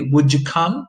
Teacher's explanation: You end up with this voiced affricate sound.